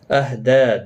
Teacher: دال کے اوپر کھڑی زبر ہے، ایک الف کی مقدار کے برابر کھینچ کر پڑھیں گے